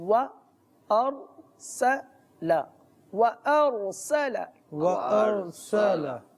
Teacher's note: شروع میں واو ہے اور ہونٹ گول کر کے اس کو ادا کیا جا رہا ہے